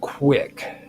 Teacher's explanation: this sound would be produced by rounding the lips, as in making a W sound, while simultaneously articulating a K at the back of the mouth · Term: labiovelar